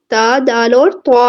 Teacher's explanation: زبان کی نوک جب ثنایا اولیاء کی جڑ سے لگتی ہے تو تا، دال اور طا ادا ہوتے ہیں۔ ان میں فرق یہ تھا جو طا ہے وہ پورا اور موٹا پڑھا جاتا ہے، باقی دونوں باریک پڑھے جاتے ہیں۔ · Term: حروف نتیہ